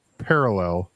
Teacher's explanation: the emphasis is on the first syllable